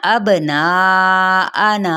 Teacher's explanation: ابناءنا با پہ قلقلہ، 4 حرکت لمبا کرتے ہوئے حمزہ کو بھی واضح پڑھنا ہے